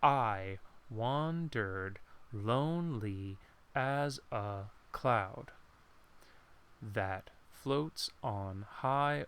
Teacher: So you start with stressed as I, unstressed, stressed. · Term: stressed and unstressed syllable